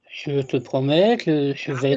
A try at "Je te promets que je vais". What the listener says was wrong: That's nice. Well done, good lad.